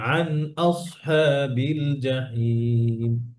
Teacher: আর এই নুন সুকুন আছে, নুন পড়া হবে, গুণা হবে না।